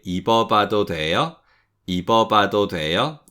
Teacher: don't try to overpronounce that W sound because it's quite difficult to do and it's almost sort of unnatural anyway